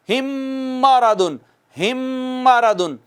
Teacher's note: چونکہ میم ہونٹوں سے ادا ہوتی ہے نا، دونوں ہونٹوں کا باہر والا حصہ ملتا ہے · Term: ادغام شفوی